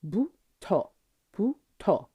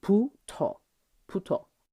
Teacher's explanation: It's not exactly a hard b. It's more like an aspirated b, so it's sort of halfway between a b and a p.